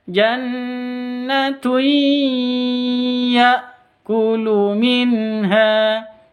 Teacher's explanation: Cara bacanya masuk ke ya pakai dengung. Masuk ke ya disertai dengung 2 ketuk. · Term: idgham bi gunnah